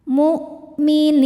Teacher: Nah, ini walaupun ada wunnya yang dibaca hamzahnya saja ya. Mu hamzah itu salah satu sifatnya dari segi suara syiddah. Suaranya tertahan saat kita tekan. Mukminin nin apabila berhenti hukumnya mad arid lisukun. · Kemudian huruf yang disukunkannya nun. Maka ni-nya ini panjang boleh dua atau empat atau enam harakat asal konsisten dalam sekali duduk.